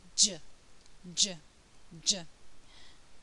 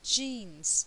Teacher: J is produced in the same way as CH so the air is stopped there's an explosion of air and then some friction in the mouth the tongue is touching the ridge behind the upper teeth but